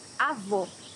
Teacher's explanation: Here you have a closed O.